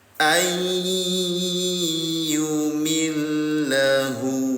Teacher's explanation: Tempelkan bunyi nun sukun ke huruf ya. Dengungkan tahan dua harakat.